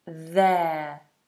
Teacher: th tongue between the teeth